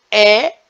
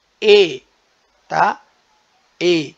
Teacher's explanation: Por exemplo, a letra E, para nós nordestinos, pernambucanos, tá? Falamos E de forma aberta. Para o sudeste do país e o sul, eles pronunciam a vogal E de forma mais fechada. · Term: variação linguística regional